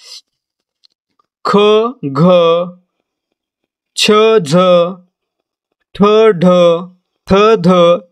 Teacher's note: ज्या वर्णांचा उच्चार करताना ह चा उच्चार होतो त्यांना काय म्हणायचं महाप्राण